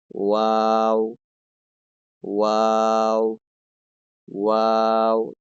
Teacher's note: আর দুই ঠোট গোল করে উচ্চারিত হবে